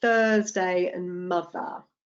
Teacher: you have to stick your tongue out between your teeth